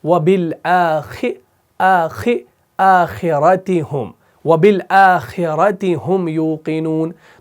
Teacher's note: تو خ جب آپ پڑھیں گے نا یعنی زیر کے ساتھ, تب بھی اس کو آپ نے موٹا پڑھنا ہے · تو خا کو آپ نے موٹا ہی پڑھنا ہے لیکن زیر کو ادا کرنا ہے. یہ ہم کہتے ہیں اس کو, یا آپ نے اس کو پر کر کے پڑھا کیونکہ اس کے اندر تفخیم پائی جاتی ہے.